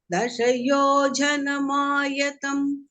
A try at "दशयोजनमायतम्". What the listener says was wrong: So this ja is not mahaprana. Dashayojanamayam. It is not Dashayojanama. Dashayojanamayam.